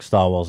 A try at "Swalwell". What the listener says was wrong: There's no T.